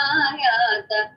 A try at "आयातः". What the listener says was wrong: Just one place. The visarga should be pronounced completely.